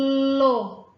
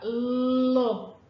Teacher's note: reparem que a minha língua ela encosta no céu da boca